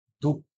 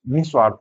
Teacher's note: हल्का सा हा भी बोलेंगे, तो विसर्ग में हल्का सा हा बोलेंगे।